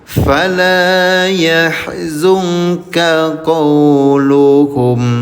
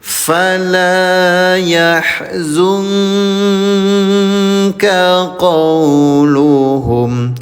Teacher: Samarkan bunyi nun sukunnya ya. Selama 2 ketukan namanya ikhfa.